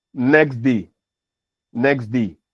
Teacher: the sound which actually um ends the word next is deleted · So you realize that the t sound which actually ends the word next is deleted, especially in rapid speech or in connected speech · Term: consonant deletion